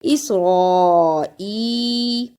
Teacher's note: را پر زبر اور بڑی مد ہے، اس کو بھی ادا کرنا ہے اور حمزہ کو یا سے ملانا ہے، اس پہ تھوڑی دیر لگانی ہے۔